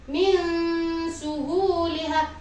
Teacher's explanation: Jadi suara nun sukun di sini dibaca samar ketika berjumpa dengan salah satu hurufnya ikhfa yang berupa sin.